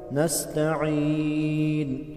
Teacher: سین میں مثل سیٹی کی آواز آئے گا، نستعین، یا مدہ کو ایک الف کے برابر کھینچ کر پڑھیں گے۔